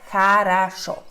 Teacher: o tem som a Porque não são tônicas